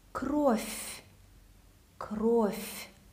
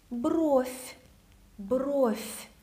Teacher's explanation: All the v will turn into f.